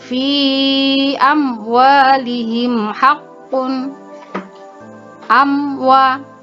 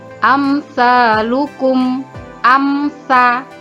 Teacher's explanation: mimnya jelas sukunnya, tidak pakai dimasukkan atau didengungkan